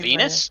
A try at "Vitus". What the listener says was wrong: No, Vitus. With a T. Vitus.